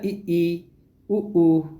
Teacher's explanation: जिन स्वरों का उच्चारण में मुख द्वार सबसे कम खुलता है उन्हें जो है संवृत स्वर कहते हैं।